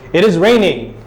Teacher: You see how there's a rise in the way I'm saying raining?